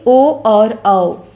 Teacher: ओ और औ, ये कंठोष्ठ स्वर हैं। इनका उच्चारण कंठ और ओष्ठ को मिला के होता है।